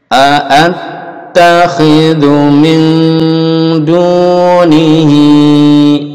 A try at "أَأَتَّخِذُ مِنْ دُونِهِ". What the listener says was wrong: أأت pendek أأت أأتخذ Lalu dunya pendek juga ya.